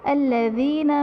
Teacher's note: یا ساکن سے پہلے زیر ہے یا مدہ کا قاعدہ اور حرف مدہ کو ایک الف یعنی 2 حرکات کے برابر کھینچ کر پڑھتے ہیں